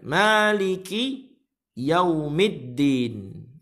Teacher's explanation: Lamnya tidak terbaca di sini. Lamnya tidak terbaca dan dia masuk langsung pada huruf dal. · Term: Alif lam syamsiyah